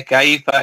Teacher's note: यहाँ पे लीन है कैफ इसको नरम आवाज से जल्दी अदा करेंगे